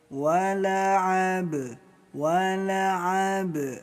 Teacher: Huruf ba sukun dipantulkan. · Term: qalqalah